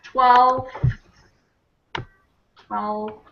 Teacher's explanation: That one's one of the most difficult ones to say because we've got the L, the F, the TH, and the S all in a long row of consonants. It's tough.